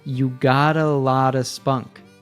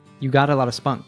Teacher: we have 2 tap T's here, which sounds like a soft d. This usually occurs when a T is between 2 vowel sounds, and they all link together, so we hear "you got a lot of spunk." You got a lot of spunk.